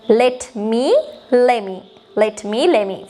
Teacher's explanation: let me වල අර t අයින් වෙලා let me වෙලා තියෙනවා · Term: reductions